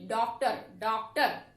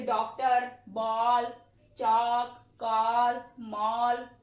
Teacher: ये आगत ध्वनि जो है इसका उच्चारण आ और ओ के बीच की ध्वनि के रूप में किया जाता है।